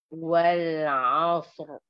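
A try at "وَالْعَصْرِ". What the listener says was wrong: Bukan asr, jangan muncung. Wal asr. Okay, jangan muncung. Lepas tu keluar di huruf ra. Ra ada takrir.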